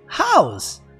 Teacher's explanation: se pronuncia house, com um sonzinho de Z no final